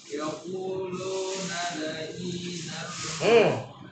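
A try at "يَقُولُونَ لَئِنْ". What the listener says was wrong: Nah, itu ya. Nanya bukan fathah. Ya, ulu.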